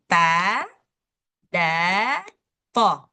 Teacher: makhrajnya di ujung lidah. Ujung lidah ketemu dengan dua gigi seri kita bagian atas.